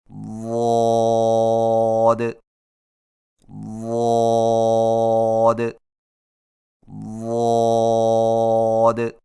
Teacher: ضاد کی ادائیگی میں زبان کے پچھلے حصے کو تالو کی طرف بلند کرتے ہوئے زبان کے موٹے کنارے کو اوپر والی داڑھوں کی جڑ پر آہستہ آہستہ نرمی سے لگا کر خوب موٹی اور دراز آواز میں پڑھیں